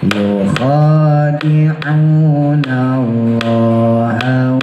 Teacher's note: Khonya ngorokin, una ainnya tekan ya. Yukhadi'u dilatih ya, harus bisa.